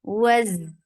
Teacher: Fatha, open your jaws. Attach with za. Za will get sifa of rakhawa.